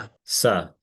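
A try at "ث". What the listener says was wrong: But this is a tha as well. You get your tongue touching your upper teeth. Tha.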